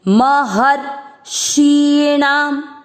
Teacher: आपको र आधा है ना तो ऐसे पढ़ना है, महर शीणाम। महर र पे आप रुक गए हो क्योंकि र आधा है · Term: आधा र